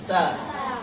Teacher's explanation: इसका नाम दंत स इसलिए पड़ा क्योंकि इसका उच्चारण दंत से होता है, दांत से होता है।